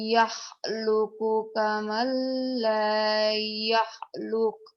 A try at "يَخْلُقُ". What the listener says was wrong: kurang kurang ngorok ya. أَفَمَن يَخْلُقُ كَمَن لَّا يَخْلُقُ يَخْلُقُ ya bisanya lah.